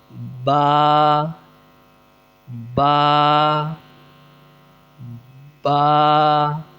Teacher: دونوں ہونٹوں کو بند کر کے زور سے کھولنے سے ادا ہوگا